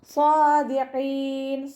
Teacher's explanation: സ്വാദ് തുബാക്കിൻ്റെ ലെറ്ററും കൂടിയാണ്, അപ്പോൾ നാവിൻ്റെ മുഴുവൻ ഭാഗവും മുകളിലേക്ക് ഉയർത്തിയിട്ട് വേണം ഉച്ചരിക്കാൻ. അവസാനത്തിൽ മദ് ആറ് സുക്കൂനിൽ വഖഫ് ചെയ്യുമ്പോൾ 2-4-6 കൗണ്ട് വീതം നീട്ടി വഖഫ് ചെയ്യുക കേട്ടോ.